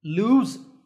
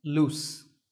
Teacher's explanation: lose has a z sound at the end, and loose has a s sound at the end. Lose, loose.